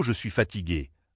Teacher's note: avec une intonation qui descend doucement